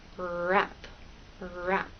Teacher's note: that bump and the sides are down with R in wrap the tip of your tongue goes up towards that bump but it doesn't touch the rest of your tongue is sort of bunched up and tight and raised towards the roof of your mouth